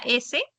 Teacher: cuando haces el sonido de la S, sientes como el aire pasa y fricciona